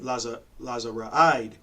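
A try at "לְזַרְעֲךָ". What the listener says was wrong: That's not a da. That's Lazara'ik.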